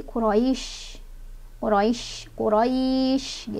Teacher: Quraisyinnya punya sifat tafasyi atau menyebarkan angin ya, jadi Quraisy.